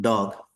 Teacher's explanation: So when you say the word called dog, so you can see the tongue is touching your ridge. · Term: alveolar